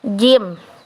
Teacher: Bunyi yang dihasilkan dengan menjebak udara, diikuti dengan penyempitan yang menimbulkan gesekan. Contohnya kayak jim. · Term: bunyi majemuk